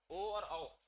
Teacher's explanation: तो ओ भी आपका वृत्तमुखी है और औ भी आपका वृत्तमुखी है